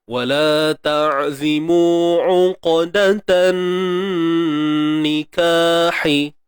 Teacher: jangan lupa untuk kita jaga sifat tebal pada huruf qaf, sifat isti'la. Okey, sifat yang kita kata hasil suaranya ialah suara yang tebal.